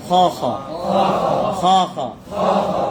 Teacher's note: খ এমনও না, আবার খা এটাও না, দুইটার মাঝখানে খ খ খ খ। মুখটা খুলতে হবে।